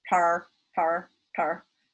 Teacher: In Indian English, for example, they have a retroflex flap. So it's tar, tar, tar. · If you wind your tongue all the way back around and then hit the back of the top of your mouth, you're going to get a retroflex.